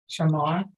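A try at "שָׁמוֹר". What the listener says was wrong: Shamor. Oh, that O sound. Oh, shamor. Shamor. Sha. Sha. This one right here. Right here at top, it's sh, not sha. Sh. Sh more. And the one on the bottom, you say it exactly the same way.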